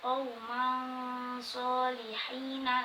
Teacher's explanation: Contoh bertemu shad, qauman solihina, langsung mencucu karena huruf shad itu mencucu